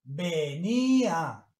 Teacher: Se pronuncian las dos vocales en sílabas diferentes, por lo tanto es hiato.